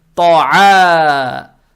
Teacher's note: Фатху произносим как гортанный звук а. И эту же фатху тянем в два шота за счет алифа без огласовки, это мат-таби'и.